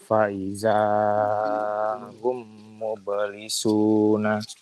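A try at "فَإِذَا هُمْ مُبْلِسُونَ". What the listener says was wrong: Gunanya ditambah sedikit biar kelihatan kuat. Mim tasdid itu adalah guna paling sempurna. yang paling sempurna. Mim tasdid adalah guna yang paling sempurna.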